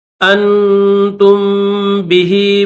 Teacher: الذی انتم بہ تا کے بعد میم ہے تو یاد رکھنا تا کے بعد میم کے اوپر غنہ کر کے پھر با کے ساتھ ملائیں گے